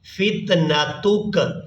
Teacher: وقف کریں گے تو کاف کو ساکن کر دیں گے, تا کو کاف ساکن کے ساتھ ملائیں گے. تا کاف پیش تک, فتنتک.